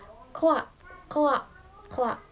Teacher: Saat mengucapkan kata KLA, lidah berpindah dari belakang velum ke depan alveolar dengan cepat dan mulus. Bunyi ini dihasilkan tanpa jeda vokal sehingga terdengar sebagai kesatuan suara.